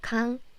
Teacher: if this 의 sound is in the middle of the syllable, not in the first syllable, then you pronounce it like E